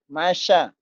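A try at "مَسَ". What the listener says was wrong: masa, lidahnya cadel. Masa, masa sih. Masa, masa.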